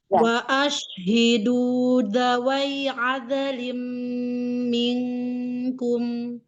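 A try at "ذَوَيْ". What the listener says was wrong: Iya, bukan dawai pakai zanya. Zawai ada.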